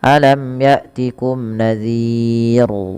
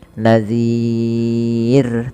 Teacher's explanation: lafal ro terakhir ini rnya dibaca dengan tipis. Kita kenal dengan istilah ro tarq. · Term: ro tarqiq